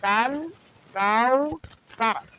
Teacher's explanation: کل کو پتلا اور رقیق کر کے، کاؤ کی کاف کو بھی رقیق اور بریک کر کے پڑھیں گے۔